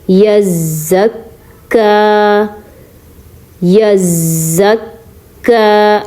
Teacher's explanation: کاف بھی 2 بار پڑھیں گے، پہلے زا کے ساتھ ملا کے اور پھر کاف کی جو حرکت ہے اس کو پڑھیں گے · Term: تشدید